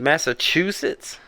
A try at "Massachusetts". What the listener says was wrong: I say Massachusetts. You don't have to pronounce the U. The U. Massachusetts.